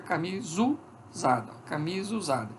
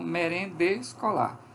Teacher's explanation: Então, por elisão, nós temos camisa usada. Então, cai a primeira vogal, fica camisa usada.